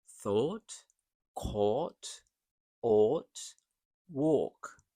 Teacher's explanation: This is a deep round sound used in thought, caught, ought, walk. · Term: broad O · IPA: /ɔː/